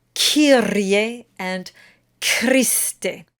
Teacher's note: we have that Italian rolled R, which is rolled on the tip of the tongue